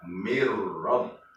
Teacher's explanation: Mil, la, mir, ro ditekan tanpa dengung.